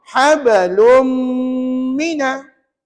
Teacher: ada bunyi sengau itulah yang dinamakan sebagai ganah dua harakat setiap dengung mesti dua harakat Jangan dua minit kalau du minit